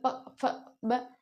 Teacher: प फ ब बिना होठों के बोल नहीं सकते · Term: ओष्ठ